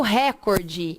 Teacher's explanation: Porque eu vou dar ênfase na sílaba cor e não ênfase na sílaba ré.